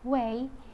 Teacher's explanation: W is voiced bilabial semi-vowel